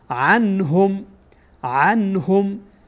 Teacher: این نون ساکنه، بعد از این نون ساکن ها آمده و ها از حروف اظهار هست، اظهار میکنیم نون ساکنه، یعنی نون ساکنه کاملا آشکار میکنیم و واضح میخوانیم